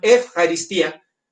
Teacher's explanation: es eu, se escribe, pero el diptongo griego obliga la pronunciación efaristía